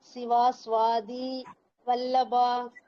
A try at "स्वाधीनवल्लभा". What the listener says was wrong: சுவாதீன வல்லபா. நாவ விடுறீங்கம்மா, நாவ விடுறீங்க, அந்த மாதிரி விடக்கூடாது.